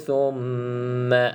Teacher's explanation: Mim bersabdu, pastikan dengung 2 harakat